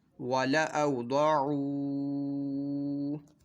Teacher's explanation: واو ساکن سے پہلے زبر ہے واو لین ہے تو اس کو بغیر کھینچے بغیر جھٹکا دیے نرمی سے معروف پڑھنا ہے، اور یہ ضاد جو ہے حروف مستعلی میں سے اس کو ہم نے پر پڑھنا ہے، اور یہاں پہ واو مدہ واو ساکن سے پہلے پیش ہے تو اس کو ایک الف دو حرکات کے برابر کھینچ کر پڑھیں گے۔